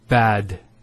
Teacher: Notice the elongation of the a sound. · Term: long vow